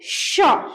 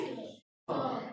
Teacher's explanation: जैसे आप तालव श तालु से बोलते हैं।